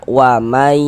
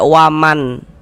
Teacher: Jangan dibaca waman tapi kita baca wamai. Jadi nun sukunnya dimasukkan ke huruf ya. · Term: idgham bighunah